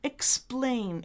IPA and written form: ɪkˈspleɪn (explain)